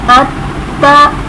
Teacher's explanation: پہلی مرتبہ اپنے سے پہلے والے متحرک حرف سے مل کر، دوسری مرتبہ خود اپنی حرکت کے مطابق ذرا رک کر۔ اب تا زبر تا، یہ اس کی اپنی حرکت ہے، اس میں ہم تھوڑا سا رک کر پڑھیں گے۔ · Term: مشدد حرف